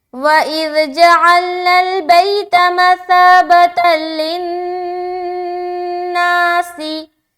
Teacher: लाम में बिल्कुल रुकावट नहीं हुआ लेकिन नून में रुकावट किया। क्यों? क्योंकि नून के ऊपर शद है और यहाँ पर नून मुशद्दद का गुन्ना करना है।